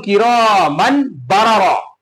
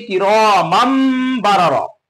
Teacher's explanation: নুন সাকিন তানবিনের আওয়াজকে মিমের দ্বারা বদলে পড়তে হয়, একে বলা হয় ইকলাব।